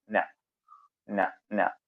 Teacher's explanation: നമുക്ക് അതിന്റെ മഹ്റജ് ഇങ്ങനെ ഏറെക്കുറെ കിട്ടും നാവിന്റെ അറ്റവും മേലെ മുൻപല്ലിന്റെ മോണയും മുൻപല്ലിന്റെ മോണയിലേക്ക് ആ പൊത്തിലേക്ക് നമ്മുടെ നാവിന്റെ അറ്റം അങ്ങ് ചേർത്ത് വെച്ചാൽ ന വരും